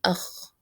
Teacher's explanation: the back of the tongue is up towards the roof of the mouth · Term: elevation